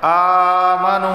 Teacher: हमज़ा खड़ा ज़बर आ, एक अलिफ के बराबर इसे खींच कर पढ़ा जाएगा। नून वाव पेश नू, इसे भी एक अलिफ के बराबर खींच कर पढ़ा जाएगा क्योंकि वाव साकिन से पहले पेश है।